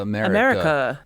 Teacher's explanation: the name of our nation begins with a schwa. It does, and it ends in one.